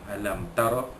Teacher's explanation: Alam tara, mimati bertemu dengan huruf ta, hukumnya izhar syafawi, menyetikan bunyi mimati bertemu dengan huruf ta tanpa dengung. Alam tara, ra dibaca tebal kembali atas, ra tafkhim